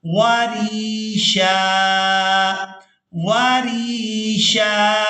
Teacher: وقف کی صورت میں شین پر ایک زبر ادا کی جائے گی اور اس کو ایک الف مقدار کھینچ کر ادا کیا جائے گا